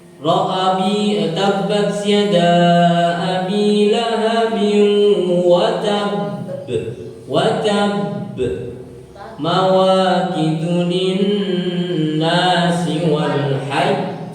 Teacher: Ketika tasdid bila diwakafkan ditekan suaranya ditahan 2 harokat diikuti qalqalah.